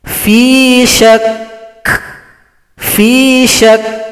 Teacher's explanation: Kalau berhenti pada huruf kaf tasydid, kafnya disukunkan, kemudian kita tekan huruf shin ke huruf kaf, berikan sifat pada huruf kaf. Nanti ada sifat hamas, ada bunyi nafas atau bunyi angin